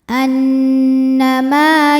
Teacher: hukumnya adalah Mad Thobi'i zohiri sebab ada Alif didahului harakat fathah maka huruf mim panjangkan dua harakat